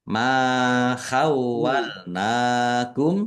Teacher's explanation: fathah alif mad thobi'i panjang dua harakat